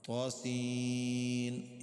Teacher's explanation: یہاں پر بھی غنہ نہیں ہے، کھڑی زبر ہے اور مد ہے، طا کو موٹا کرنا ہے